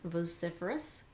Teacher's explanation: some people may pronounce it with more of a long o sound vociferous great some people pronounced a little bit sloppier with an